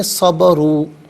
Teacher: تو واو ساکن ما قبل را پر پیش، تو اس سے واو مدہ کہتے ہیں، ایک الف کی مقدار کھینچ کر، یعنی 2 حرکت کی مقدار کھینچ کر پڑھا جائے گا